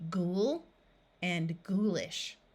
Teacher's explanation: the O and U will have the long oo sound which is the ooh of the word Moon